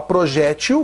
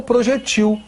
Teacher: paroxítona terminada em L, ou projetil, uma oxítona terminada em L